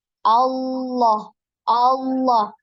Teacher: dan cara menebalkannya itu dengan menaikkan pangkal lidah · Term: lam mufakhamah